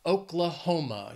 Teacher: this state has four syllables and the stress is on that third syllable Oklahoma you can hear it emphasiz that hom Oklahoma I don't